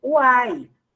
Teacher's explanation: Semivogal U, vogal A e semivogal I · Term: tritongo